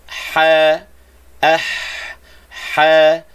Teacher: Mana makhraj ha? Makhraj ha tengah halqum. Wasatul halq. · Makhraj ha tengah halqum, wasatul halq, tengah halqum. Ha, ah, ha, sebut ha, jangan bunyi rendah, jangan sebut ha, bukan, itu tebal.